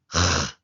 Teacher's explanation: the letter CHET is a voiceless uvular fricative making a /χ/ sound